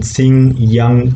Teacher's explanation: the back part of the tongue is touching the roof of the mouth and the oral cavity is closed air escapes through the nasal cavity therefore it is a voiced veiler nasal sound as in sing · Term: voiced velar nasal sound